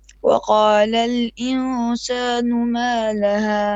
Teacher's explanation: Make your ikhfa on the insanu. Make it a bit longer.